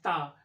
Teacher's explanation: जिह्वा का हमारा अग्रभाग दांतों से टकराता है, स्पर्श करता है, तो ये स्पर्श व्यंजन हो गए।